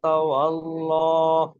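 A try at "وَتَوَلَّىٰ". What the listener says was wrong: ল হবে না, ওয়াতাওয়াল্লা, ওয়াতাওয়াল্লা। ল না, লা।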